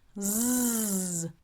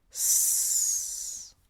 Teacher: Z, voiced, vibration. S, unvoiced, no vibration. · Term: voicing